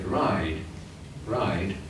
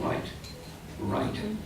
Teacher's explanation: I know that that is a D at the end because it's a longer syllable than right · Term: shortening